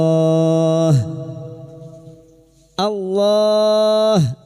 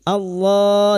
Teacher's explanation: Lam jalalah yang diawali dengan fathah dibaca tafkhim, Allah. Dan kita berhenti pada tanda qaf lam (al-waqfu aula ), kita memperpanjangnya dengan empat harakat.